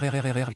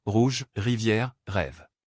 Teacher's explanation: comment les prononcer correctement le son r C'est un son gutural produit au fond de la gorge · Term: son guttural